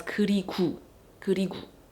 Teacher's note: a lot of Korean speakers tend to pronounce their O as U in certain parts of the word.